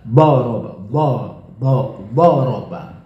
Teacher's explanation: Jadi 3 makto. Nabernya yang lebih kuat di antara ketiga itu adalah yang pertama bo.